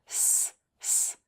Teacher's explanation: this sound is voiceless because you should feel no vibration on your fingers when you make that sound